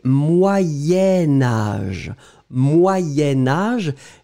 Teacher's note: moyen-âge et alors effectivement vous décrivez moyens vous écrivez âge mais comme vous faites le lien entre les deux vous allez prononcer moyenne moyen-âge